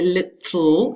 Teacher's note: lateral so moving out on the sides to produce the sound the tip of the tongue does not move and that means the air can only escape on the sides of the tongue